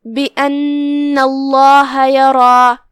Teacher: یہاں لفظ الجلالہ کا حکم ہے تفخیم، کیونکہ اس سے پہلے والے حرف پہ مطلب نون پہ زبر ہے، تشدید زبر ہے، تو ہم لفظ الجلالہ کو بھاری آواز میں پڑھیں گے